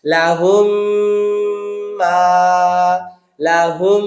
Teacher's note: লাহুম, ঠোঁট একেবারে লেগে যাবে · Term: মিম সাকিনের ইদগাম